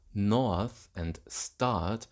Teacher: In a southern accent like contemporary RP, the vowels north and start smooth to north and start, thereby merging with thought and palm.